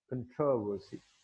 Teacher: कुछ इंग्लिश जो लोग हैं वो फर्स्ट सिलेबल पर उस पर स्ट्रेस करते हैं